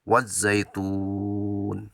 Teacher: Jadi bacanya yang asalnya 2 harakat menjadi 6 harakat. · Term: mad arid lis sukun